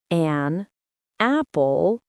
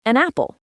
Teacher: The N sound from an hooks right onto the A sound of apple. It becomes one smooth word.